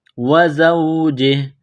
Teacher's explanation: جب وقف کریں گے تو ہا کو سائلنٹ کریں گے